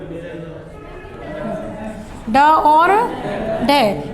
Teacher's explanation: दो उच्चारण स्थानों से होता है, कल बताया है, ड और ढ। एक तो मूर्धा से, क्योंकि ड ढ मूर्धन्य में ही आ रहे हैं, और दूसरा जीभ मूर्धा से टकराती है और उन्हें बाहर फेंकती है, तो इन्हें स्पृष्ट व्यंजन भी कहा जाता है।